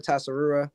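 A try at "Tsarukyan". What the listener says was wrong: Saruya. You don't pronounce the T.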